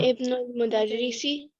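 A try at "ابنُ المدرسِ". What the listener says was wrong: जब हाँ अन्ना बनु जब मिडल में इब्न आता है ना तो उसका हमजा गिरा देते हैं. अन्ना बनुल मुदरिसी. तो आपका इसका हमजा गिर जाएगा.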